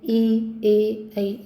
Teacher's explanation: जिनका उच्चारण करते समय जिह्वा का अगला भाग हमारा सक्रिय रहता है तो हम उनको कहेंगे अग्र स्वर। जैसे ई, ए, ऐ, इसमें हमारा जिह्वा का अग्र भाग सक्रिय रहता है।